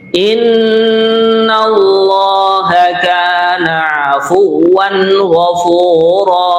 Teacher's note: Kemudian kalimat afuwan, tanwin berjumpa dengan ghain, namanya adalah idhar. Idhar itu jelas, suara tanwinnya jelas.